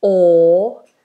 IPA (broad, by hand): ɔ: